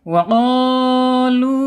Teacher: Wa qalu, secara hukum mad tabi'i ya, panjangnya 2 harokat. Kemudian secara makhraj, karena ini huruf mad ya, al-jaub ya, hanya melalui rongga mulut saja ya, tidak boleh melalui rongga hidung ya.